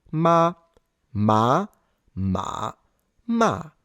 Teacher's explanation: The approximate representation would be going from A2 into a very almost flat tone that goes ever so slightly low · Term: third tone